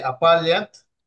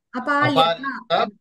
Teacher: హిందీలో లాగా కాకుండా చివర మనం అచ్చుని మనం పూర్తిగా పలకాలి